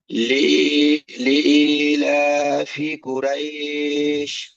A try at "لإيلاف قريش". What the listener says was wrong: জি, এখন ঠিক আছে।